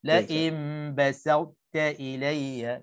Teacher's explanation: Jadi pastikan sa nipis, ta nipis, di tengah-tengah tu muncung mulut saja isyarat kepada to yang tebal saja, tanpa qalqalah, tanpa disebutkan to sedikit pun.